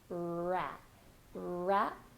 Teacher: Then for wrap, you're gonna start with the American R, so round your lips, tongue all the way back, and then really open your mouth for that open vowel sound. Wrap, wrap, and then a very soft P at the end.